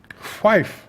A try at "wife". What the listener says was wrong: There's no H in wife. It's just wife. It's not wife. It's just wife.